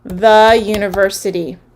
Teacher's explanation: so we've got the schwa at the end the or the uh sound